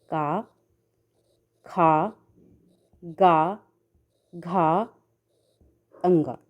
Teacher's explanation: कंठ से उच्चारित वर्ण हैं ऐसे वर्ण जो का वर्ग के अंतर्गत आते हैं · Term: कंठ वर्ण